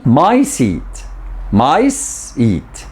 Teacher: the sa in mice takes shorter time than the sa in seat